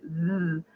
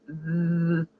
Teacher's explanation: as you make the Z, zzz, you'll feel vibrations in your fingers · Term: voiced consonant